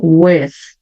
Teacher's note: o W também eu começo fazendo sempre o som de U, né? Faço aquele biquinho, U, então with. · Faço aquele biquinho, U, então with. E termino lá em cima com a minha língua atrás dos dentes de cima.